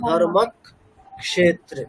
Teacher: কটা রিপিট হচ্ছে, যুক্তাক্ষরের প্রথম অক্ষরটা রিপিট হচ্ছে